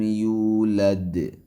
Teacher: یولد دال پہ قلقلہ کرنا ہے